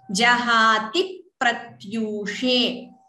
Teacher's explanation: Dvitvam here. Please note that P is doubling.